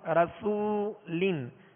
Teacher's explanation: را پر زبر ہے لہذا را کو پر پڑھیں گے, اور آگے وہ مدہ ہے رسو, سین کو سیٹی کی آواز میں پڑھیں گے مگر باریک. رسولن, سین پر پیش بھی ہے لہذا ہونٹوں کو کامل گول کر کے ادا کریں گے. لام کے نیچے 2 زیر کی تنوین ہے, آگے کاف حروف اخفا میں سے ہے لہذا غنہ کر کے پڑھیں گے.